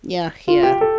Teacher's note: The first letter A in Yahya says the ah vowel like father. Yahya. Letters HY say he, very short and glided to the last a sound.